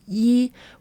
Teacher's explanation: So Yi is pronounced like Yi with a soft downward tone.